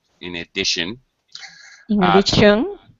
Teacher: Just make sure the T in addition is an SH sound.